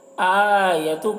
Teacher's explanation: آیتو کا حمزہ میں کھڑا زبر ہے، کھڑا زبر کو 1 الف کے برابر کھینچ کر پڑھیں گے